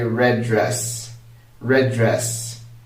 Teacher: without linking them, I'm saying red, pausing for a bit, and then saying dress. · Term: link sounds